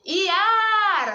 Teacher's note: Tá vendo que o A, eu fiquei um tempão falando? O A é a minha sílaba tônica.